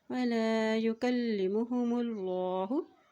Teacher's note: अल्लाह के नाम से पहले पेश है तो यहाँ भी अल्लाह का नाम मोटा अदा किया जाएगा